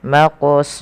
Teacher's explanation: kalau Ikfa kalau Idam itu memasukkan nah Ikfa di tengah-tengahnya jadi nunnya tidak terlalu dibaca dengan jelas tapi dia disamarkan kepada huruf selanjutnya maka di sini samarkan huruf ta kepada huruf Fa langsung maqs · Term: Ikhfa, ikhfa